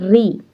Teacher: ये री और श जो है वो मूर्धा से निकलता है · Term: मूर्धन्य